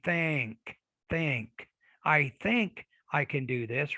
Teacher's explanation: So assimilation, the K and the G are affecting, if you look at the chart here, the K and the G up here, they're affecting the N. So the N, it kind of moves over and becomes more of a velar consonant when it occurs right before the K or the G.